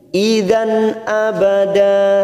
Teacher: fathatan win pada huruf dal bertemu hamzah kita baca jelas tanpa mendengung idhar halqi. Idan abada da fathatan win atau fathatain karena diwakafkan maka kita baca 2 harokat mat iwat abada.